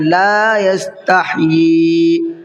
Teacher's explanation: اکثر غلطی یہ ہو جاتی ہے لوگوں سے کہ اس کو لا یستحیی پڑھتے ہیں، لا یستحیی نہیں پڑھتے، تو یہ غلط ہے۔ لا یستحیی یہاں لام کو کھینچ کر کے پڑھنا ہے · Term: مد منفصل